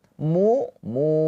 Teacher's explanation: mu mu mu dibaca panjang dua harakat Karena ada pemanjangnya ini wau sukun. Wau sukun sebelumnya harakatnya dommah. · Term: Mad thobi'i